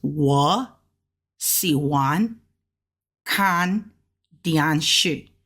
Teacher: since we got two third tones side by side we got to make this first third tone a second tone